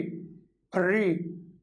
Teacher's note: इस री का जो उच्चारण होता है ये मूर्धा के पास जाकर होता है, जहाँ से हम लोग अपने मूर्धन्य व्यंजन बोलते हैं, मूर्धन्य वर्ण बोलते हैं, वहीं से।